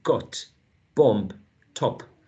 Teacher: it can be with a short and lax o as in got, bomb, top